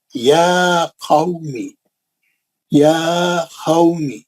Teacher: कितने आइटम है इसमें, 2 आइटम, कौन से, खड़ा जबर 2 हरकत, उसके बाद लीन, है ना।